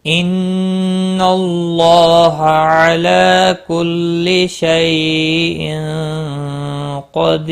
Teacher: وقف کی صورت میں یہاں پر ہو رہا ہے، یہ خیال رکھیں. اور 3 سے 5 الف کے برابر کھینچ کر وقف کریں